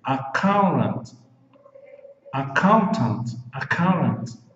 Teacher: Quando debaixo do T tiver esse Vzinho aqui pequenininho debaixo do T, é porque você pode fazer o T com som de R, caso você queira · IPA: /əˈkaʊn.t̬ənt/